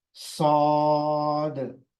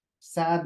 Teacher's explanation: पीछे से जबान को उठाएंगे स सद सद साद नहीं पढ़ेंगे बारीक आवाज नहीं है इसकी मोटी आवाज है